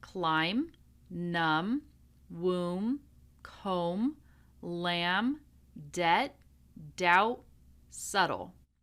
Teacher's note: This is the silent B. So we do not pronounce the B in any of these words.